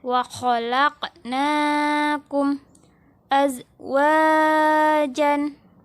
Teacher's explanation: Qafnya ini dibaca memantul.